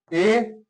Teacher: है ये भी समृत है ए ये अर्ध संवृत है अ अर्ध संवृत का मतलब मुख इसमें अपेक्षाकृत कम खुलता है